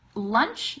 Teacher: Lunch, the CH, it cuts off like a little bit more quickly. You're saying ch, and the other one is j.